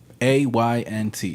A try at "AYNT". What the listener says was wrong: ANT. The Y is silent. Don't ask me why.